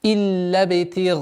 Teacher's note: Так как правило гласит, алиф подчиняется впереди стоящему звуку, а гайн у нас твердый звук, и поэтому удлинение у нас будет твердым в размере 4 огласовок.